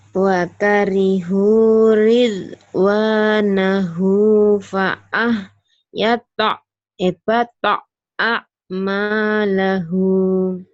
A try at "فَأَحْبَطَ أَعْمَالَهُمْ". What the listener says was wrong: Pendek. Pak ahbato a'malahum. Lagi. A'malahum. A'malahum. Fa ahbato. وكرهوا رضوانه فأحبط أعمالهم.